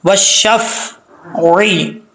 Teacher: واو کو جب شین سے ملائیں گے الف اور لام گر جائے گا